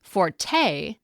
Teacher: the stress-shifted pronunciation forte, with emphasis on the second syllable